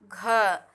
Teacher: कैसे, क्योंकि घ जो है वो क वर्ग का है, मतलब कंठ से घ निकल रहा है। अगर आप बोल रहे हैं घ तो वो आपके गले से निकल रहा है। दूसरा ये स्पर्श व्यंजन के अंतर्गत आता है और तीसरा ये अघोष है, ठीक है, और ये महाप्राण ध्वनि है। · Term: कंठस्थ ध्वनि